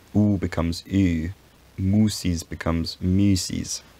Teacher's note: the u gains the front tongue position, even though the lips stay rounded